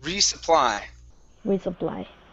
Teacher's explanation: So you're going to rest on re just a second longer.